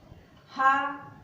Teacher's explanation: हा ये स्वरयंत्र है, हा ये महाप्राण है, महाप्राण भी है और सघोष भी है। इसके उच्चारण में हमारे स्वर तंत्रियों में कंपन भी होता है